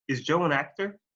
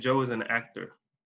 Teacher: La entonación va arriba al final de la pregunta.